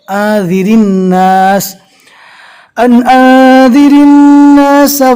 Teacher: اکان للناس عجبا ان اوحینا الى رجل منهم ان انذر الناس۔ رو کے نیچے زیر ہے، لہذا رو کو باریک پڑھیں گے